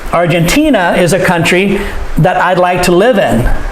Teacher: we say live stronger than the other words. Because Argentina, country, live.